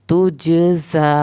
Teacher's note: جم پہ کلکلا ہوگا